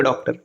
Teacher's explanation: इसका उच्चारण औ के समान या ओ के समान होता है, या प्राय अंग्रेजी के शब्दों में आता है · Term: चंद्र